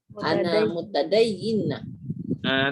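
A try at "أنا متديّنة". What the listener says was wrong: Tak ada sabdu. Mutadayyinah.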